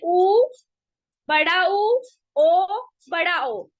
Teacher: इन चारों को उच्चारित करके देखो आपके मुह की शेप राउंड बनेगी गोल बनेगी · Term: वृत्ताकार